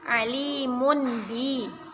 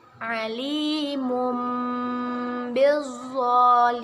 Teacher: Ketika ada tanwin bertemu dengan huruf ba, kita ubah cara membacanya menjadi mim. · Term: iqlab